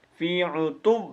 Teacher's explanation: عین کو پیش دینی ہے اور اس کے بعد تا کو واو کے اوپر کھینچ کے مارنا ہے